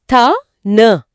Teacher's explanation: இது பல்லும் உதடும் சம்பந்தப்பட்ட எழுத்துக்கள். த, ந ஆகிய இரு மெய்களும் மேல்வாய் பல்லோட அடிய நாக்கின் நுனி பொருந்துவதால பிறக்குது. அதாவது நாக்க வெளியே நீட்டி பற்களோட பின்பக்கம் முட்டணும், கரெக்டா?